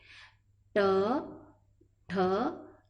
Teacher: आपकी जबान दांत के ऊपर ऊपर टच होने वाली है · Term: मुर्दा